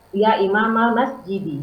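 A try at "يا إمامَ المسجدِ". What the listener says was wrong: Ya Imamal Masjidi. Bagus.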